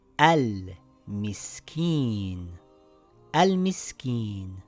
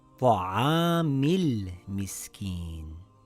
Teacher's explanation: Now, when we read it together, we drop the Hamzatul Wasl. It now reads Ta'amil Miskeen.